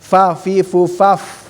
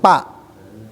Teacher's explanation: Harus selalu, karena fa ini ada huruf yang mahrojnya gigi kan, gigi atas seri dengan bibir bawah dalam, fa ya, fa fi fu faf, fa harus ada desis, jangan pa ya, jangan pa tapi fa.